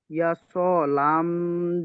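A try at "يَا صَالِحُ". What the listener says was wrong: লি টান হয়ে যাচ্ছে, লি টান হয়ে যাচ্ছে। ইয়া সলি।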